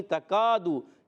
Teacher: کاف کا مخرج زبان کی جڑ تالو کا سخت حصہ کاف ادا ہوتا ہے